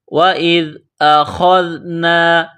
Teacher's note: جس طرح انسان گلے سے بلغم نکالتا ہے اسی طرح خا کو نکالیں گے۔ خا کو ذال کے ساتھ ملائیں گے، ذال کو باریک کریں گے۔